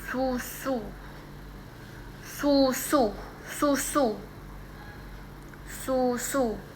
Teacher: Nah, bunyi U ini terdengar bulat dan kuat seperti contoh kata susu, susu, susu, susu. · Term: vokal tinggi atas belakang